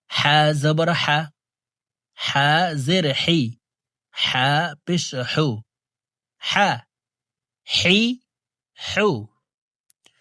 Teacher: হা হরফের উচ্চারণ হালকের মধ্যখান থেকে পড়তে হবে